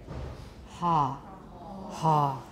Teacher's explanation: pull the tongue right back so you get a pharyngeal fricative